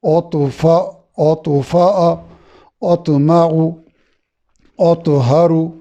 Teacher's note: طا میں کلکلا ہے اور طا خوب موٹا ہے